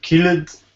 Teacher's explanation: rule number three sounds like a d sound simple d no extra vowel